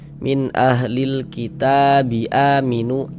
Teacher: A dibaca panjang. Ini namanya adalah mad badal.